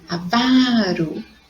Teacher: a sílaba vá, que é a sílaba mais forte quando eu pronuncio